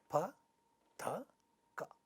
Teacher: pa is a bilabial sound, ta is an alveolar sound, and ka is a velar sound. But they are all voiceless stops. There is no voicing in each one of them.